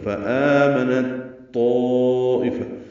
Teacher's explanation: تو پہ مد متصل ہے، الف مدہ کے بعد حمزہ یا کی شکل میں لیکن ایک ہی کلمے میں